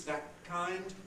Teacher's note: You can have a T with no audible release